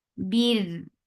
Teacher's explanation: Ra will get sifa of tawassut as you are giving sukoon on ra because of this waqf. And ra will be light here with the waqf because there is kasra before it.